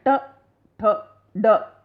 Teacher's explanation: अब इनको बोलते समय देखो, जब हमारी जीभ है ऊपर तालु से टकराकर, जीभ की नोक जो है वो ऊपर तालु से टकराती है और उसके बाद ऊपर जाकर वो मुड़ जाती है, तब जाकर ये ध्वनियाँ निकलती हैं, ट, ठ, ड। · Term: मूर्धन्य